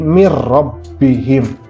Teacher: Nah, contoh di sini mir, nah kan tidak bisa dengung mir ya, mir rabbihim, tapi nunnya jadi berubah jadi ro, dia dimasukkan ke ro, tapi dia tidak mendengung, jadi mir rabbihim. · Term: idgham bila gunah